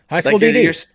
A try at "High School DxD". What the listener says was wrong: No, that's not how you said it. paused where the X. Yeah, you paused where the X was, say it, but you didn't say it out loud.